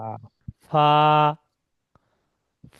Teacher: Bangla ফর মতন উচ্চারণ হবে না, দুটো ঠোঁট দিয়ে হবে না। ফা উচ্চারণ হবে উপরে যে দুটো দাঁত আছে উপরের দাঁতটা আর নিচের এই ঠোঁটের মাঝখান।